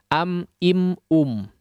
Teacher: Tapi maksudnya adalah diizharkan, dibaca dengan jelas mim sukunnya tanpa digunnahkan dengan gunnah yang panjang. Sedangkan makna atau arti daripada syafawi, izhar syafawi adalah maksudnya bibir.